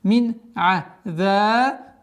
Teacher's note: Здесь у нас правило изхар, четкое произношение айн. Мин аза. Долгота в размере двух огласовок фатха.